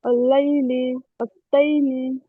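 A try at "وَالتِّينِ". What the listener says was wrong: আপু তাইনি কেন হবে? আমরা কি বলছিলাম, তাসদিদের নিচে থাকলে জের হবে, তাসদিদের নিচে থাকলে জের হবে, তাসদিদের উপরে হলে জবর হবে, তাহলে এটা কি হবে?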